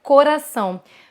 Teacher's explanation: Você falar com a vogal mais fechada. Então, as vogais mais fechadas, elas são usadas para o sotaque mais neutro